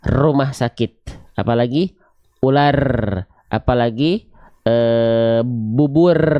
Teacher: r itu getarannya harus banyak